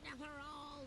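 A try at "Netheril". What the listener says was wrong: you're pronouncing it with an A.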